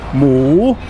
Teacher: ends with a long vowel and it's got a higher class initial consonant so it's got a rising tone